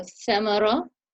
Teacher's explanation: remember tha, where you have to let air come through between your teeth